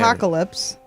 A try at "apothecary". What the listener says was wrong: No, not apoc. Apoth. Apothecary. You're just apocalyptic and you want to do apoc.